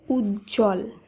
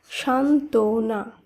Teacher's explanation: যুক্ত ব্যঞ্জন রয়েছে এবং তার সঙ্গে বফলা যুক্ত রয়েছে নিয়ম অনুসারে শব্দগুলি শুদ্ধ উচ্চারণে বফলা কে বাদ দিয়ে শব্দগুলিকে উচ্চারণ করতে হবে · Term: বফলার উচ্চারণ হয় না